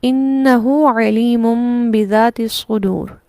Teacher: ہو کو جو ہم کھینچیں گے قصر کی مقدار میں، یہ مد صلہ صغریٰ ہے جو ہائے ضمیر پر ہو رہی ہے